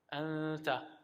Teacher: that ghunna with the ikhfa sound, again, you're using your nostrils. It's called the khayshum, the nostrils, in order to pronounce his ghunna.